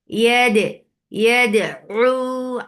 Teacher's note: When you are giving shidda on dal first, dal is a shidda letter. First, you are giving shidda, you're cutting off the sound, and then you're making qalqala. You're giving taba'ud.